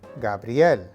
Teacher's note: make sure to combine the two sounds of brie and L into one sound with the emphasis on the L.